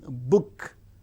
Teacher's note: The active articulators are the two lips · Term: bilabial